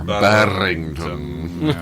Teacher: Ooh, I like getting the rolled R in there.